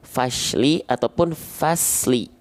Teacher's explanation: Shad sukun banyak orang melafalkannya berubah menjadi huruf shin atau huruf sin. Dibacanya gini, fashli ataupun fasli.